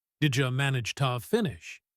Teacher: In the slow version I said to finish. In the fast version the word to is reduced to a weak sound. It sounds like ti. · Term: schwa sound